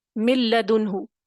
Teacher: نون ساکن کے بعد لام آیا تو غنہ نہیں ہوگا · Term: عدم غنہ